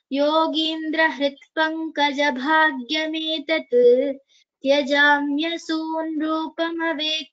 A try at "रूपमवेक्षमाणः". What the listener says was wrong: One improvement that यू can have is रूपमवेक्षमाणः. द क्ष this particular letter यू can focus more on द pronunciation of that letter.